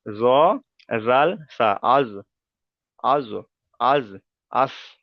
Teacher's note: তাহলে জ, জাল, সা উচ্চারিত হবে জিভের আগা এবং সামনের উপরের দুই দাঁতের আগার সাথে।